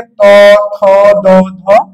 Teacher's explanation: তারপরে ত বর্গীয় বর্ণ। ত বর্গীয় বর্ণের উচ্চারণের স্থান হলো দন্ত